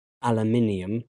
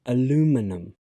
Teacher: Firstly, the stress has changed places. In British English, it's on the third syllable. But on American pronunciation, it's on the second syllable. Aluminum. Also, in British English, we have an extra syllable.